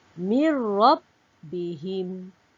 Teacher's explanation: nun mati bertemu ra dibaca tanpa dengung. Kerana huruf ra ini merupakan huruf idgham bila gunnah.